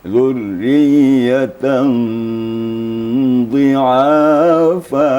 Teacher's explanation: Jadi disamarkan bunyi fathatain atau nun mati itu bertemu dengan dhad. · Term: ikhfa hakiki